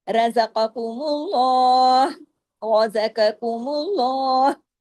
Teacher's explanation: پھر میم باریک، اور پھر میم کے پیش کی وجہ سے اللہ کے نام کے اندر جو لام ہے وہ ہیوی ہوگا، لام جلالہ.